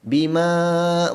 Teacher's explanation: Yakfuru, ra baris depan 2 harakat, samping tu tebalkan huruf ra ni. Bima, ma baca 4 harakat kerana hukumnya mad jaiz munfasil.